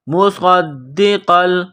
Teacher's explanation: صاد میں سیٹی کی آواز پیدا کریں گے، صاد کو موٹا کریں گے، صاد کو دال کے ساتھ ملانا ہے، دال میں سختی کرنی ہے۔